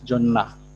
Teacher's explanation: It is also worth mentioning here that in Deuri, when alveolar sound precedes the nominative marker a, final consonant, it geminates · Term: gemination